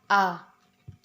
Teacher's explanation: vokal Netral bibir tidak bulat dan tidak terbentang lebar